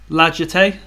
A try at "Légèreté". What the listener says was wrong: Yeah, it's not a hard G. Oh, no, you were using like a hard J, not a hard G.